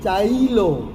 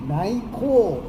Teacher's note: ય નો ઈ થઈ ગયો ય નહીં ઈ થઈ ગયો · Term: ય શ્રુતિ ની ઈ સાથે હેરફેર